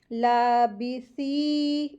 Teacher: सा हरूफ लिसविया है, सॉफ्टली पढ़ेंगे, और इसके साथ या मदिया का रूल हो रहा है, इसको 2 हरकत खींच के पढ़ेंगे, लाबिसी, इस तरीके से, ठीक है। · लाम के ऊपर खड़ी ज़बर लगी है, तो लाम को 2 हरकत खींचेंगे, और फिर बाकी नीचे ज़ेर लगी है, इसको जल्दी पढ़ेंगे।